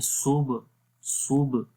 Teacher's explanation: کمزور قلقلہ، مطلب کہ قلقلہ کی جو آواز ہے، جو جنبش ہوگی وہ اتنی زیادہ نہیں ہوگی